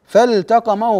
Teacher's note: تظهر اللام الساكنه قبل التاء